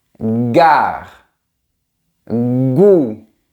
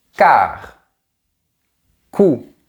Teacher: Par contre, le son [g] vibre et le [k], ça ne vibre pas. · Pour les deux sons, l'arrière de ma langue touche le palais, c'est-à-dire la partie supérieure interne de la bouche. Par contre, le son G vibre et le son K ne vibre pas.